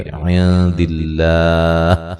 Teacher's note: عند اللہ، نون ساکن کا باریک اخفا ہے، لفظ اللہ کو باریک پڑھیں گے، اس سے پہلے زیر ہے